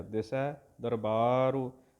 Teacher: ਬੱਬੇ ਕੰਨਾ ਬਾਲ ਲੰਬਾ ਕਰਕੇ ਰਾਰੇ ਔਂਕੜ ਸੰਕੋਚ ਕੇ